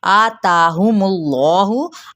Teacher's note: आताहुमुल्लाहु, आ ता पे मद्दे बिल अलिफ का कायम मुकाम है, इनको भी एक अलिफ या दो हरकत के बराबर ही खींचा जाएगा और मीम की पेश को लाम के साथ जब मिलाएंगे तो इसमें जलाला का जो लाम है वो पुर पड़ा जाएगा, क्योंकि पीछे वाले हर पर जमा यानी पेश है।